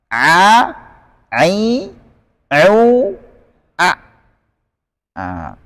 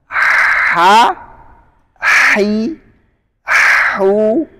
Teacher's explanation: Tengah tenggorokan ada huruf Ain dan ha